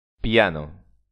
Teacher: piano tiene la intensidad en la vocal a